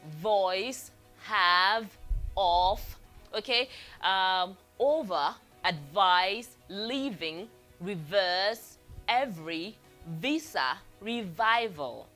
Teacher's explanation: you can feel the vibration when you pronounce the V sound